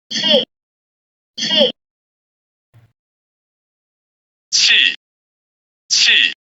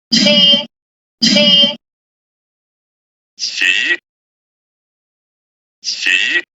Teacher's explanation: the word chi air uses a flat intonation, while chi period uses a falling intonation. If you look at the pitch and intensity obtained from the 2 word variants, the word chi period produces a lower pitch and intensity compared to the word chi air.